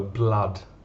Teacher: you have double o but the sound is ah the same sound as up